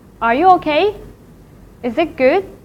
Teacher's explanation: It is a rising tone. It starts from the lowest part of a voice and then go up. In English, we will associate this rise in pitch with questions. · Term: second tone